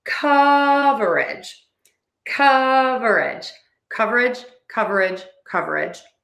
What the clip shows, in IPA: ˈkʌv.ɚ.ɪdʒ